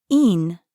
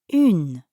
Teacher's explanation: start by saying in, like the final sound in the English word seen. But then round your lips forward like you're blowing a kiss. So, in becomes une.